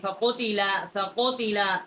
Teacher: کوے کے متصل زبان کی جڑ جب اوپر کے تالو کی طرف ٹکر کھاتی ہے زبان تو اس سے قاف یہ ادا ہوتا ہے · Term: بڑی قاف